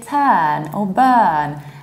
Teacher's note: you have stressed UR, which is always a long R